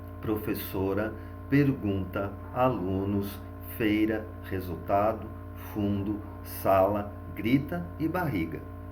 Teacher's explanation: sílaba tônica na penúltima sílaba, ou seja, todas as palavras desse quadro serão paroxítonas.